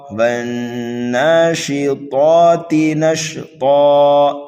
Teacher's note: طا حروف مستعلیہ میں سے ہے، اس کو جو ہے موٹا کر کے پڑھیں گے، کھڑا زبر ہے اس لیے کھینچ کر کے پڑھیں گے، تا متحرک ہے، جلدی پڑھیں گے، والناشطات نشطا، حرف طا پر جب وقف کریں گے تو یہاں پر بھی وقف بالابدال ہوگا، دو زبر کو الف سے بدل دیں گے۔ · والنازعات غرقا، والناشطات نشطا، یہاں پر دیکھیے نون مشدد ہے، ہم اس کو غنہ کر کے پڑھیں گے، کھڑا زبر ہے دوسرے نون پر، کھینچ کر کے پڑھیں گے